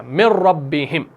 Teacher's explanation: हमने यहां पर नून और रॉ को मर्ज कर दिया, यानी एक हरफ को दूसरे हरफ के साथ मिला दिया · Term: इदगाम